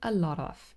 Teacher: here lot the T becomes a flap t a lot of it's just this little tap and that again happens on the alula ridge the tip of the tongue just Taps against it